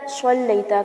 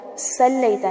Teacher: وعلی آل محمد کما صلیت، صلیتا کو سلیتا نہیں پڑھنا، صاد کو موٹا پڑھا جائے گا اور سین کو باریک